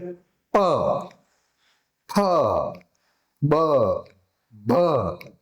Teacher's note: બંને હોઠ ભેગા થઈ હવાને ભેગી કરી અને પછી છોડશે